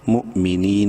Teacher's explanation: واو silent ہے، میم زیر می، مؤمی، نون یا زیر نی، یا مدہ ہے، نون کو 1 الف کے برابر لمبا کریں گے